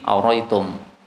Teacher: Hamzah yang kedua boleh dihilangkan menjadi aritum